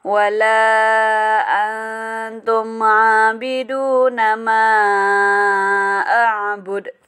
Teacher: Ini juga ada ikhfa ya, nun mati bertemu ta. Mim mati bertemu ain, itu izhar syafawi.